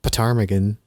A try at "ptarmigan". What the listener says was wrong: No, the P is silent. like pterodactyl. pneumonia. Yeah, the P is silent. Ptarmigan.